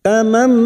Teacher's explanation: Masuk pada huruf mim dan mendengung selama 3 harokat. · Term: idgham bi gunnah